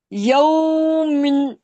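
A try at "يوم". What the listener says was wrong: یومن تو ہے، اب وقف کریں نا، ساکن کریں. میم کو ساکن کریں. یوم یہی تو بول رہا ہوں، اس طرح کر کے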